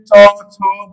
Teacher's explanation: তারপরে চ, বর্গীয় বর্ণ। উচ্চারণের স্থান হলো তালব্য